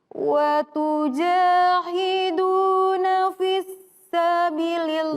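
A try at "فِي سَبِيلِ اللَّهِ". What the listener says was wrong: Wa tujahiduna fi perhatikan, fi sabilillah, bukan fis. Tidak ada tasydidnya. Jadi fi sabilillah. Fi sabilillahi. Fi sabilillah. Fi sabilillahi.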